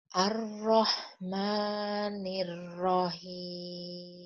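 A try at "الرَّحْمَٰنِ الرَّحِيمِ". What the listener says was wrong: Mimnya panjang 2 harokat saja Bu ya. Man. Ar-Rahmanir-Rahim. Ma-nya 2 saja Bu ya.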